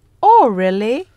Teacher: notice the rising intonation on really this shows that the speaker is surprises he she thought that